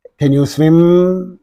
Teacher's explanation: The voice is going upwards, okay. · This is an yes/no question, and this always receives a rising intonation.